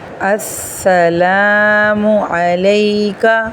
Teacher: یہاں پر سین مشدد ہے اور لام الف لا ہے، اس کو تھوڑا کھینچنا ہے، اور میم کو اکثر لوگ مو پڑھ دیتے ہیں، یہ منہ ہے۔